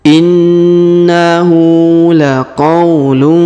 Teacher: tanwin UN bertemu Fa maka didengungkan dan disamarkan ya cara bacanya didengungkan dan disamarkan diberikan warna hukum tajwid adalah